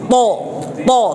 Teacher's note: তরটা হচ্ছে মোটা, সেক্ষেত্রে জিহ্বার গোড়া এবং জিহ্বার মধ্যখান এগুলো উপরে তালুর সাথে মিশে যায়